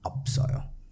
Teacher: p will remain there when pronouncing and s will move to the next syllable and it will be read as opsoyo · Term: carried over